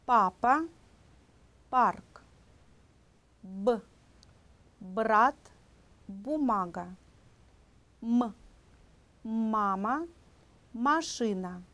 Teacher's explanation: 알파벳 빼에 뿌, 알파벳 베에 브, 그 다음에 M에 무, 이런 소리들이 두 입술을 붙였다가 떼면서 내는 소리입니다. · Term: 두 입술 소리